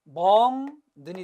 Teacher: 뒤에 것 때문에 앞에 게 바뀌었으니까 역행, 그리고 비음으로 바뀌었으니까 뭐가 된다? 비음화가 되는 것입니다.